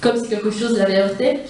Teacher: il apparaît que la séquence, comme si quelque chose l'avait heurté, composée de 8 syllabes et affectée d'un seul posé marqué sur la syllabe finale du participe passé , présente une basse densité rythmique, laquelle prélude à l'intensification de